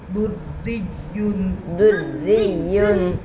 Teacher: दाल के ऊपर पेश है, रा के ऊपर तशदीद है, रा के नीचे जेर है, रा मुशद्ददा के नीचे जेर है इसलिए रा मुशद्ददा बारीक होगी। या के ऊपर तशदीद है, या के ऊपर 2 पेश की तनवीन है।